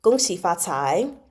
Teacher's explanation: gong is going to be the first tone, and then xi is the vocal fry. Fa, same as gong, and cai going up.